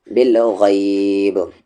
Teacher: رکنے کی وجہ سے با ساکن ہو گیا اس لیے قلقلہ ہوگا